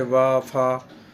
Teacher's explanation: दंतोष्ठ में निचले होठ और ऊपर के दांतों से